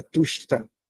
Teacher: Se você falar tusta, você vai falar assim, ó, tush, e na hora que você falar o tá, a língua toca o céu da boca, tusta. Tá vendo? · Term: cerebral